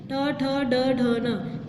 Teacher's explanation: जो हमारी जो जीभ है वो टर्न हो जाती है, राउंड हो जाती है